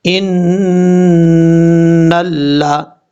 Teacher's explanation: نون کے اوپر شد ہے، غنہ کریں گے ایک الف کی مقدار، اور نون کو لام سے ملائیں گے، بیچ میں الف کو چھوڑ دیں گے۔